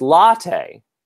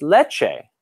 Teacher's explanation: So in fact, latte and leche are very, very, very close because in Italian, you just have a T sound, but in Spanish, you have a T sound plus a sh sound